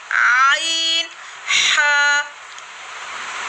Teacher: वस्ती हलक, यानी हलक का दरमियानी हिस्सा